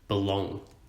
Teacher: the word belong the bee is unstressed we doughnut precise it and the long is stressed we emphasize it belong all the word fragile we stress the fright and we